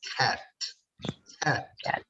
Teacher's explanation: So in the word cat, K sound gets aspirated and it sounds as cat.